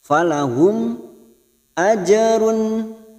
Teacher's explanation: jim sukun qalqalah sugro kita pantulkan